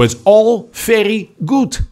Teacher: the d at the end of a word like good becomes a t and the o o sound the uh and good becomes ooh